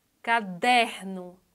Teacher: a sílaba mais forte é der. Não é a última, é a penúltima. Então ela é paroxítona.